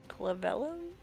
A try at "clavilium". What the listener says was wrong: the clavilium. You're really close. Yep, there's an extra eye in there.